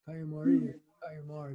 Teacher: some might say Kayumari, accent on the end